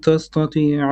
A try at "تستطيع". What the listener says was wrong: Make your ta flat. تستطيع, not ta.